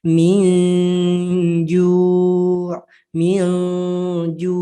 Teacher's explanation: seperti idgham kalau idgham kan betul-betul dimasukkan tuh nunnya tapi dia dibacanya samar aja jadi masih ada tapi tidak terlalu jelas dan kalah dengan si dengungnya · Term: ikhfa